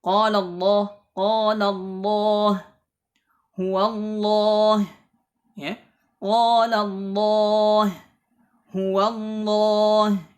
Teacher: Kalau misalnya lam jalalah tersebut didahului oleh fathah sebelumnya, ada huruf hidup yang berharakat fathah, maka lafzul jalalah tersebut dibaca tebal, ya. Seperti di sini contohnya misl qala Allah huwa Allah, ya, qala Allah huwa Allah, ini dibaca tebal, Ya.